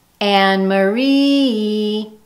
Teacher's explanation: The ma of my name is unstressed. That syllable has less emphasis. It's said faster and with lower volume. In fact, you can hear the schwa there.